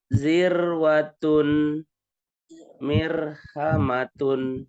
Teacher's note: risalatan silakan di jalan rijalan rizalatan latan paling bawah ro sukun sebelumnya kasroh tipis